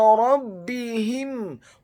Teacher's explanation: huruf ra-nya dibaca tafkhim, tebal, fathah satu harokat. Huruf ba-nya dibaca tipis, tarqiq, ditasydidkan, ditekankan, kasrah satu harokat.